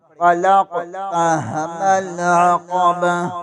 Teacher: تا کو ختم کر دیں گے اور ہا پڑھیں گے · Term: وقت کی صورت